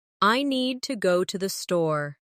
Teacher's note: Make need and store strong. And let to the be quick and light.